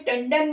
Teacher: टंडन में अपने आप ही ऑटोमेटिकली ण की साउंड आ रही है